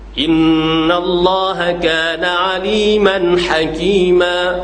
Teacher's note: Padahalnya, pada asalnya aliman hakiman, tapi aliman hakima, hilang tanwin. Sebab kita nak berhenti atas dia.